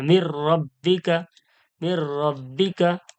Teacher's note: রকম গুন্না হবে না বিনা গুন্না হয়ে মিলিয়ে পড়তে হবে দেখুন নুন সাকিনের পরে র এসছে ওই জন্য ডাইরেক্ট তাজদিদে পড়া হচ্ছে কোন রকম গুন্না হবে না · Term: ইদগামে বেলা গুন্না